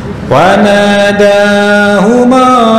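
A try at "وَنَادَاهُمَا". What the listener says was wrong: kepanjangan. Jangan panjang-panjang, dua harokat ya. Wa nadahuma rabbuhuma. Baru panjang.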